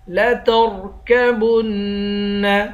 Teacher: با کو نون کے ساتھ ملا کر نون پر غنہ کریں گے